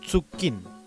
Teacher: En el caso de la tsu, en muchas palabras del Chesungún tiende a reemplazar a la CH